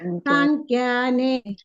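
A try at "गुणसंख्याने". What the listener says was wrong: ಸಾಂಖ್ಯ ಸಾ ಇಲ್ಲ ಅಲ್ಲಿ ನೋಡಿ. ಸಂಖ್ಯಾನೆ ಇಲ್ಲಿ ಸಂಖ್ಯಾನೆ ಬರಂಗಿಲ್ಲ. ಗುಣ ಸಂಖ್ಯಾನೆ ಸಕೆ ಅಲ್ಲಿ ಅನುಸ್ವಾರ ಇದೆ, ಅನುನಾಸಿಕ ಇದೆ ಅಲ್ಲ, ಅನುಸ್ವಾರ ಇದೆ. ಸೊ ಅನುಸ್ವಾರ ಉಚ್ಚಾರಣೆ ಹೇಗ್ ಬರುತ್ತೆ ನೋಡಿ. ಇಲ್ಲಿ ಮುಂದೆ ಸಂಖ್ಯಾ, ಮುಂದೆ ಏನಿ ದೊಡ್ಡ ಖ ಇದೆ, ಖ ವರ್ಗ. ಅದು ಖ ವರ್ಗ ಅಂತಂದ್ರೆ ಕೊನೆಗೆ ಅನುನಾಸಿಕ ಬರೋದೇನು? ಖ ಕ ಗ ಗ ಂಗ ಅನ್ನುವಂಥ ಅನುಸ್ವಾರ ನಾವಲ್ಲಿ ಬಳಸ್ಬೇಕು. ಅಂದ್ರೆ ಗುಣ ಸಂಖ್ಯಾನೆ. ನೋಡ್ರಿ ಂಗ ಬರ್ತಾ ಇದೆ ಅಲ್ಲ, ಸಂಖ್ಯಾನೆ.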